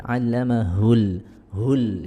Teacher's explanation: Ini allamahul, hu-nya, huruf h-nya kurang sempurna. Jadi kalau huruf h itu salah satu huruf yang keluar dari halaq atau tenggorokan, yang mana dia keluar dari aqsal halqi, ya, di tenggorokan yang paling jauh dari mulut ya.